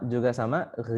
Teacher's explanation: Kemudian huruf yang terakhir huruf ghain ya. Sama ghi, ketika kita mau mengucapkan huruf ghi berharokat kasrah, maka dia tidak naik lidah kita. Berbeda dengan huruf-huruf itbaq.